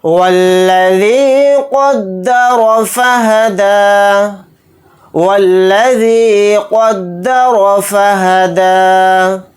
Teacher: یہاں پر قاف کو موٹا پڑھیں گے یعنی پر، یہاں پر را کو بھی موٹا پڑھیں گے کیونکہ را کے اوپر زبر ہے. فہدی یا نہیں پڑھا جائے گا، حالت وقف میں دال کے اوپر کھڑا زبر لگا کر ہی پڑھیں گے.